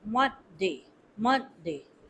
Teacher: The focus should be on the first syllable, mon. · You should not give stress to day. Only the stress should be on month, month, Monday, Monday.